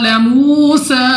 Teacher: واو ساکن سے پہلے پیش، واو مدہ ہے تو 2 سیکنڈ تک کھینچ کر پڑھا جائے گا. سین کو بھی ہم نے 2 سیکنڈ تک لمبا کرنا ہے.